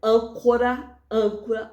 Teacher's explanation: antepenúltima sílaba da palavra é a sílaba tônica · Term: proparoxítonas